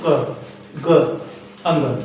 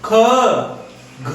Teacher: जैसे क ग अंग कम सांस लेगा। ख, घ तो इसमें जो है ना थोड़ा सा ज्यादा सांस ले रहा है। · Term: महाप्राण